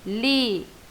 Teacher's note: E a minha sílaba mais forte é o li. Então, ela é uma proparoxítona, tá?